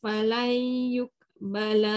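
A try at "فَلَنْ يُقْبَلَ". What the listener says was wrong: qalqalah tak ada. Falan yuqbala min ahadihim. Bala pendek. Qaf tu qalqalah kan.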